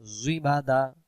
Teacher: জ অক্ষর জিহ্বার আগা থেকে মোটা করে পড়তে হয়।